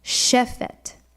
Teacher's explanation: when you see the transliteration shefet, you want to remember to put the accent on the first syllable